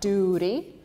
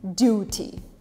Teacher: In duty, in America, we replace T with an R, duty. You almost say it with an R.